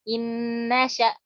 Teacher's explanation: Jadi nun ini dianggap di sini tuh nun yang pertama enggak kebaca lagi. Langsung masuk ke nun yang kedua. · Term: dengan gunnah